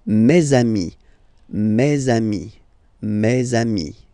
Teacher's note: let's be purist and make this beautiful liaison between these two words